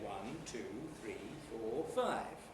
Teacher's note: when we're listing things often we use rise rise rise and then fall at the end of the list